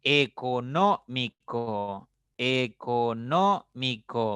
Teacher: una palabra de cinco sílabas pero la mayor fuerza o la mayor intensidad el acento está en la tercera sílaba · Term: esdrújula